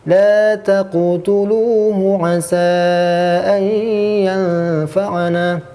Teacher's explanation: karena huruf qalqalah tersebut berada di tengah, jangan sampai kita terlalu kuat pantulannya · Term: qalqalah sugro